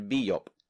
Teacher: she overcorrected and she called me Elder Biyop, because she replaced that sh with a y.